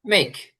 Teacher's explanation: এই যে কে আছে এই কেটা একটু ক্ষয়ের মতন হবে